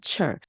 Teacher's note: 입술이 쑥 나가면서 바람도 많이 나오는 철이 됩니다